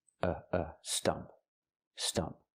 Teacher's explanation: I'm using the short uh sound like cup and up. It's a relaxed and closed sound. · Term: short sound